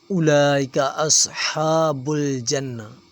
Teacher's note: ہا باریک ہے، صاد موٹا ہے، ہا کے اوپر کھڑی زبر ہے، ایک الف کے برابر کھینچیں گے۔